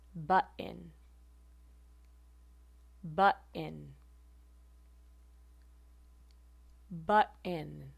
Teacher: Instead of releasing at the alveolar ridge, pot, I'm releasing at the glottis. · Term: glottal stop